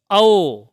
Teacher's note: औ जो है यह अर्ध विवृत होता है